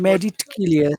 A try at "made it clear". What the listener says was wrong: Yeah, not med. Made. Made. Got to pronounce e in the final part. Made. Made. Made. You've got to use your tongue.